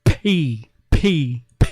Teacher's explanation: when you say p p p that's a sudden burst of air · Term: plosives